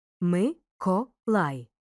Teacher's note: відкритий бо закінчується голосним другий ти наголошений закритий закінчується приголосним Миколай у слові три склади перший і другий ненаголошені відкриті третій наголошений